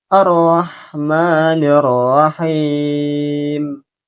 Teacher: Ketika pengucapan him, ini boleh dibaca dengan 3 versi, yaitu dengan membacanya 2 harokat, 4 harokat, dan 6 harokat.